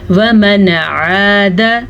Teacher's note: نون ساکن کو ظاہر کیا, بغیر غنّے کے پڑھا, عین کے مخرج کو انہینس کیا.